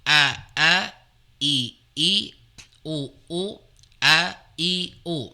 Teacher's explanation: Hamzah dia keluar dari aqsal halqi atau tenggorokan yang paling bawah. Jadi tenggorokan yang paling bawah di sini ya.